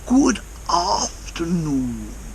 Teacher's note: the a in afternoon is very elongated ah and also the ooh in new is very very long as well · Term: elongation